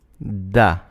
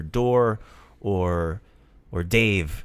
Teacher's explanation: when you say the word da, you're putting the tip of your tongue at the back of your teeth, at the back of your front teeth.